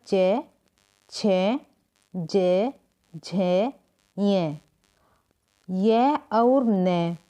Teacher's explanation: चे छे जे झे ये और ने का उच्चारण स्थान तालु होता है। इन वर्णों को तालव्य कहा जाता है।